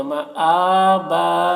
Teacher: جو حمزہ میں کھڑا زبر ہے اسے کھینچیں گے